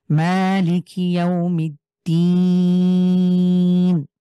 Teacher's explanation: শেষে ৩ আলিফ মাদের হরফ, মাদ্দে আরদি এক আলিফের পরে ওয়াকফ হওয়ার কারণে।